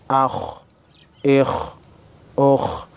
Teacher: خا حروف مستعلیہ میں سے ہے لہٰذا خا کو موٹا پڑھیں گے